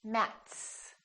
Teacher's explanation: Matt is that voiced or voiceless T it's voiceless so we put an S on the end